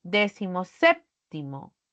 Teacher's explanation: Pero si yo lo junto, el primer elemento va a perder la mayor fuerza de voz porque recaerá en la antepenúltima sílaba al pronunciarla